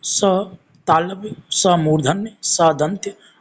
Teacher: ऊष्म संघर्षी व्यंजन, इनके उच्चारण में वायु रगड़ खाकर निकलती है